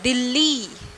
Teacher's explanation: दी तो जल्दी खत्म हो गया शब्द, और ली लंबा चलता है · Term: दीर्घ स्वर